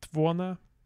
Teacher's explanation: we have our unstressed mid vowels turning to schwa and then promptly deleting